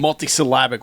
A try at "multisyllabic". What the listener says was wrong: I think you put the emphasis on the wrong syllable.